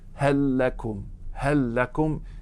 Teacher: You're going to make idgham of the first lam into the second.